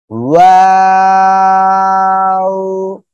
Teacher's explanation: এই অক্ষরটা উচ্চারণ হবে দুই ঠোঁট গোল করিয়া, ঠিক আছে, শুরুতেও গোল হবে এরকম, আবার শেষেও কি গোল হবে এভাবে, ঠিক আছে।